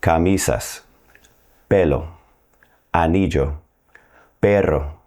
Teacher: The first category are words ending in a vowel or the letters N or S. The stress in these words will be on the next to last syllable. · The stress in these words will be on the next to last syllable. Not the last one, the next to last syllable.